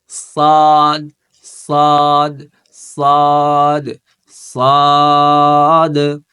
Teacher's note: সদ হচ্ছে তিন আলিফ টান হবে এবং এই সদ কিন্তু মোটা সদ হরফটা মোটা হবে সদ পড়ার সময় জিবাটা থাকবে কোথায় যেখানে আমরা তা উচ্চারণ করছি